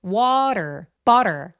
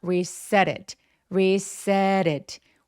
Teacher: t나 D 스펠링들이 모음 사이에 끼어 있으면 살짝 굴러가는 소리를 낼 수 있어요. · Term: flap T